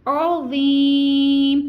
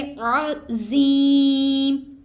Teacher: अगर हम इसको रूल्स के मुताबिक, मखारिज के मुताबिक पढ़ेंगे, यानी ज़ा को नरमी के साथ अदा करेंगे और मोटा अदा करेंगे, सिटी के साउंड के साथ अदा नहीं करेंगे